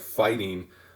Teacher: The stress is on the fight syllable, not on the ing. So if you tried to rhyme bling with fighting, you'd be forcing the stress to be on the last syllable where it doesn't belong. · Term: feminine rhyme